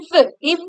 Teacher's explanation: கீழ் உதடு போய் மேல் பல்லோட பொருந்தும் அதனால பிறக்கும்